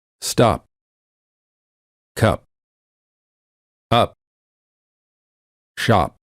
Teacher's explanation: when they say the letter P in the word stop, the lips stay closed. No air comes out. This creates almost a silent version of the sound P, or a half P.